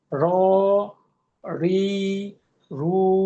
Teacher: যে জিজ্ঞেস করি কোথা হতে, জিহ্বার আগার পিঠ, অর্থাৎ জিহ্বার আগাটার নিচের যে ধার, লোয়ার এইজ বলে ইংলিশে, তার বরাবর উপরে তালুর সঙ্গে লাগিয়ে, অর্থাৎ এটা মানে জিহ্বাটা একটু উল্টিয়ে তালুর সঙ্গে লাগাতে হয়। অর্থাৎ জিহ্বার আগার পিঠ তার বরাবর উপরে তালুর সঙ্গে লাগিয়ে এই হরফটা উচ্চারিত হয়।